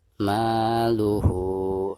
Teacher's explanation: ketika membaca hu, maka di sini harus dipanjangkan 2 harokat karena dihukumi mad silah qasirah ya